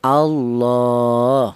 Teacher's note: Kemudian di sini ada Allahu yaitu di atas lam jalalah ini itu berupa harakat berdiri. Ini menunjukkan bahwa lam jalalah tersebut dibaca panjang yaitu satu alif. atau dua harakat atau dua ketukan ya Allah seperti itu. · lam jalalah tersebut dibaca panjang, yaitu satu alif atau dua harokat atau dua ketukan